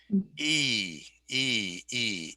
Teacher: not a diphthong that's just one sound okay e e e it's high and it's in the front